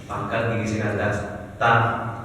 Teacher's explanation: ta itu letaknya di ujung lidah, ta, po, dan da, ujung lidah ke pangkal gigi seri atas, ta. Jadi bukan ta, nggak ada C nya.